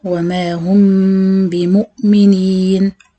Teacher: هعمل إخفاء شفوي بغنة، والإخفاء هيكون بإطباق الشفتين، وأفتح طبعا هعمل الميم بغنة وأفتح عشان أقول الباء